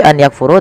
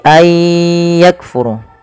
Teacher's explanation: memasukkan bunyi nun kepada huruf setelahnya kemudian disertai dengan ghunah maka idgham bighunah maka ay membacanya bukan lagi an yakfuru tapi ayakfuru kafur kaf memiliki sifat yaitu huruf kaf yaitu sifatnya adalah sifat syiddah dan sifat ee hames.